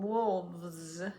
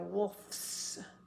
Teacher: we're going to change that F to a v because we've got vibrating F doesn't vibrate s is vibrates so